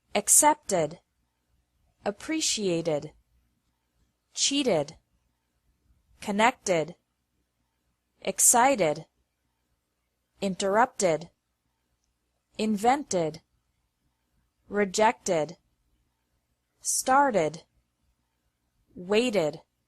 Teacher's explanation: the second pronunciation of e d is like e d with an extra syllable after verbs ending with a t or d sound